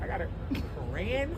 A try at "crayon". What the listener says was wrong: Crayon. It's not You're literally saying every letter. How do you say knife? You don't say knife, do you? Just like crayon. You don't say crayon, you say crayon.